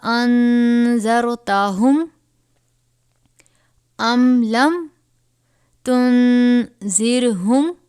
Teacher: یہاں پر نون ساکن کے بعد حروف اخفا میں سے ذال آیا ہے. اخفا یعنی غنہ کر کے پڑھیں گے.